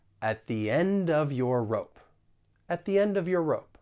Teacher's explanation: we can also link the final consonant sound in end with the beginning vowel sound in of